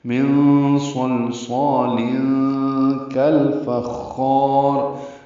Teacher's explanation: ہم نے وقف کیا، ہم نے خا کو لمبا کیا، مد وقفی بنائی یا مد عارض للسکون، اس لیے خا کو لمبا کیا اور را کو پر پڑا. · کاف باریک ہے، لام سے ملا دیں گے. کل اس کا الف بیچ میں نہیں پڑیں گے، یہ کا اور الفخار ملا دیے گئے ہیں.